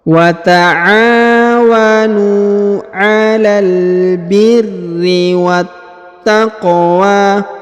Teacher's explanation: Huruf qaf dipantulkan atau dikolkolahkan ya karena berharokat sukun.